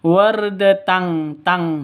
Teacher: Tanwin bertemu dengan kaf, samar didengungkan, siap-siap ke huruf kafnya, tanwinnya ditambah dengan ng. Makanya bacanya wardatang, tang seperti itu ya.